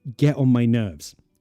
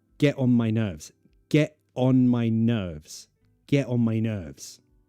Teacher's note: You really get on my nerves. Notice I'm using a glottal T there, and it flows nicer.